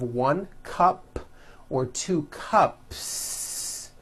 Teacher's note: There's no voicing at the end of that word. The S remains unvoiced.